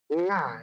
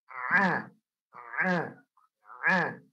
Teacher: Huruf ain tidak masuk hidung. Jadi nanti prakteknya itu ditutup hidungnya yang rapat, ya.